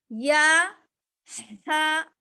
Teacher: ہا کی آواز نکالنا ہے ہم کو کہاں سے, درمیانی حلق